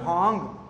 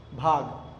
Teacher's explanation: इसमें क्या होगा नासिका का प्रयोग नहीं करेंगे आप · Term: अन अनुनासिक